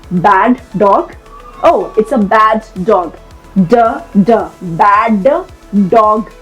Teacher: if two words have the same consonant sound, all right, you say the sound once but hold it slightly longer. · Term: linking similar consonants